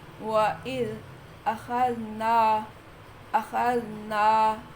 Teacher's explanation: زال میں سے سیٹی نہیں ہے، نون الفنا میں گننا نہیں ہے۔